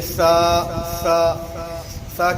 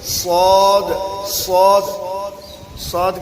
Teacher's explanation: اگر سین کو آپ موٹا کر کے پڑھیں گے تو صاد بن جائے گا، اور صاد کو باریک کر کے پڑھیں گے تو سین بن جائے گا